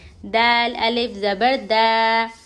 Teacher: دال زبان کی نوک سامنے کے 2 دانتوں کی جڑ میں لگانے سے دال ادا ہوتا ہے. الف سے پہلے زبر حرف مدہ تھوڑا کھینچ کر پڑھیں گے.